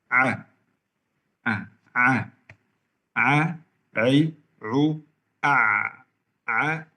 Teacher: huruf ain keluar dari tengah tenggorokan dengan sifat jahar, tidak keluar hamas, tidak keluar angin, dan juga tawassut, nama suara bertengahan yang sukun di antara syiddah dan rakhawah.